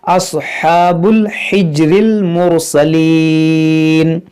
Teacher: ये हा जो है वस्ते हल्क से अदा होगा जहाँ से आइन अदा होता है